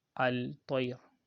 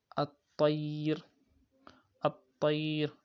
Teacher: there is lam, but the lam has been inserted into what? Into the ta. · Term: idgham